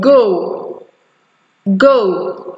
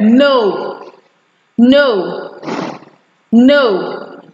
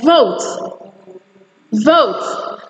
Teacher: during the production or the articulation of this sounds your mouth actually moves upwards and then backwards because you are actually moving the articulation of a central to